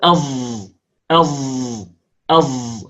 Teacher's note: الصاد التي تكون كالزاي أي الصاد المشمة صوت الزاي، أي المخلوطة بصوت الزاي، هي عبارة عن صاد أشربت صفة الجهر التي في الزاي